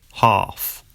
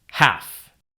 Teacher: Ah in UK English normally becomes an a sound in American English. For example, in the UK, half, and in the US, half.